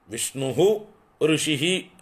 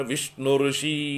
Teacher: സ്വരാക്ഷരം വരുമ്പോൾ അതിന് മുമ്പിൽ വരുന്ന വിസർഗങ്ങൾ ലോപിച്ചു പോകും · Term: വിസർഗം ലോപിച്ചു പോകും